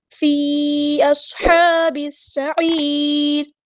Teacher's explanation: صاد ہم نے پورا ادا کرنا ہے، ہیوی لیٹر ہے اور اس میں سیٹی بھی آئے گی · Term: حروف صفیریہ